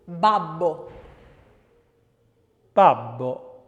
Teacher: You can see that that's voiced and plosive and bilabial. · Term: voiced B